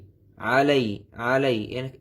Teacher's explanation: আইনটা গলার ভিতর থেকে উচ্চারণ হবে